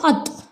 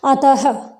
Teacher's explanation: विसर्ग का उच्चारण किस रूप में होता है, ह के रूप में होता है